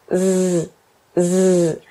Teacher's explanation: Le Z est une version sonore du S. Donc votre langue est à peu près dans la même position.